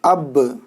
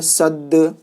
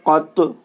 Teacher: حروف قلقلہ 5 ہیں: قاف، طا، با، جیم، دال، جن کا مجموعہ قطب و جدن ہے۔ جب ان پر جزم ہو تو ان کو پڑھتے وقت ان کے مخرج ٹکر کھا کر الگ ہو جاتے ہیں